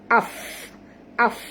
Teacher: Nak bunyikan ialah kita ketap gigi atas kita ke bibir bawah. Af. Keluar angin ya. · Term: hamas